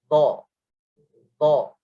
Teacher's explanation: Hujung lidah dikeluarkan sedikit di antara gigi kacik. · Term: huruf dha